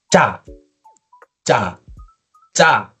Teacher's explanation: Ya, agak ditekan terus dinaikkan intonasi ca ya. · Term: konsonan ganda